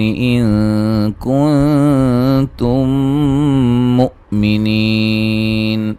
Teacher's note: یہاں نون ساکن کا اخفا ہے